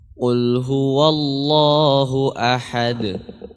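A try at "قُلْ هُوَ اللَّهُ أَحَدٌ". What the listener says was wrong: Jadi huruf wawunya huwa. Ya, biasanya kalau huruf tipis ada di dekat huruf tebal, dia ikut tebal, terpengaruh dengan ketebalannya, dengan ketebalan huruf setelahnya. Maka di sini jangan jadi huwa Allah, tapi huwa dibuka wanya. Huwa.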